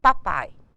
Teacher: papai ningém Fala papai aí nós teríamos um dito crescente papai o a é mais forte o som do I decresce por isso ele é decrescente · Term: ditongo decrescente